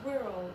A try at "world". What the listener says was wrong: Really good.